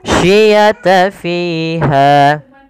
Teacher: Pada lafal fi dan ha juga dipanjangkan sepanjang 2 harakat karena dia mad tabi'i pula